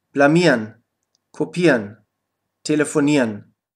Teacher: Verben, die auf IEREN enden, kannst du am Ende IERN aussprechen.